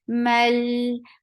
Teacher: This is not anymore long because it is being attached with the coming up letter, and this lam will get tawassut.